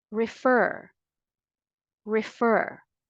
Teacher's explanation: both in American and British English the stress is on the second syllable not first